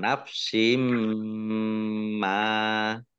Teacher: tanwin bertemu dengan huruf mim, bacaan idgham bi gunnah. Ya, masuk dengan mendengung